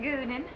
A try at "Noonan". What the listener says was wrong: It's Noonan with an A-N.